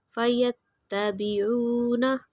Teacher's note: واؤ کی مثال حروف مدہ 1 فنگر کے برابر لمبا کریں گے۔